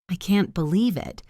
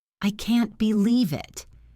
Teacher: You are shocked and happy. Your voice should go up high on believe and then come down.